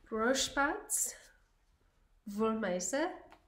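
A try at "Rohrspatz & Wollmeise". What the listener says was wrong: Rorschbatz und Wollmeise. Gotta get the and in there.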